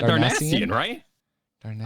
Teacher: The emphasis in Darnassus is on the second syllable, so I put the emphasis on the second syllable when I say Darnasian.